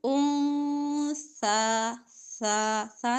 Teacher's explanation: انسا نون ساکن کے بعد سا ہے اکفا، یہاں پہ نون کو چھپائیں گے